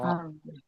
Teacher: yang bergetar di ujung lidah dan ro, tertahan oleh ro, suaranya mengalir dari dalam tapi tertahan oleh lidah lidah.